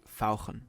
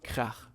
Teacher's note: German has the special ach sound, which sounds very throaty.